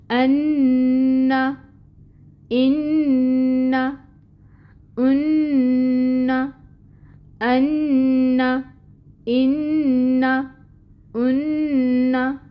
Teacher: نون مشدد، نون میں صفت غنہ پائی جاتی ہے